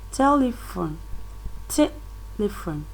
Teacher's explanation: the stress is on the t, that is at the first syllable